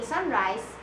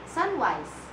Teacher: the sound of the letter R is being replaced with the sound of the letter W. Let's take the word sunrise for example. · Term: articulation disorders